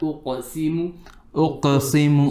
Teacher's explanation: On the qaf, do a bit of qalqala.